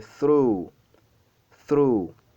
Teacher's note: vous allez étirer la prononciation du U. C'est through, pas through, pas through, c'est through, through.